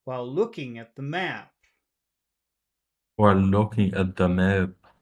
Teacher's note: is that a small vowel sound long it's long it's long so we have our our long short long Rhythm that we want